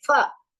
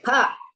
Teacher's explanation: Pa, pha, bha, bha, ma. In Sanskrit, you are not going to say fa, pa. You are going to say pa.